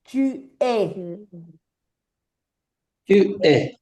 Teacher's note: la S y la T no se pronuncian. Claro, no se pronuncian, pero te hacen abrir la E fonéticamente.